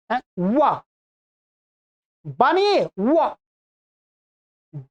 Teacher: व का स्थान होता है दंत और ओष्ठ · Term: वकार